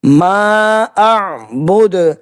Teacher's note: ما اعبد، ماں کے اوپر مد منفصل ہے، 2.5 سے 3 الف کے برابر کھینچ کر ادا کرنا ہے